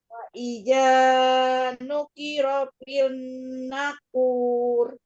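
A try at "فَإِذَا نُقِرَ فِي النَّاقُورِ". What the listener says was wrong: Nah-nya panjangkan. Faiza nuqira fin naqur.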